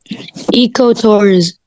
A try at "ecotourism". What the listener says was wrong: مش ايكو، echo. echo. yes, echo tourist.